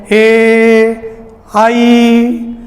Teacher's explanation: कंठ आ ई बराबर ए, तो आ का उच्चारण स्थान कंठ है, ई का तालु है, इसलिए ए दई तो कंठ तालु, ए और आई का उच्चारण स्थान कंठ तालु है।